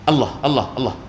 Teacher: Dia menyebut kalimah Allah dengan dipendekkan lam tu. Allah, Allah, Allah, tanpa Allah, Allah.